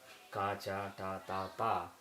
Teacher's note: Similarly, if you look at the consonants, the main consonants ka group, cha group, ta group, tha group, and pa group, like I said earlier, if you see where the tongue is raised, it starts at the back of the mouth and slowly comes to the lips.